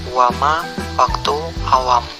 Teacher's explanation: konsonan W kriteria bunyi bilabial semivokal bersuara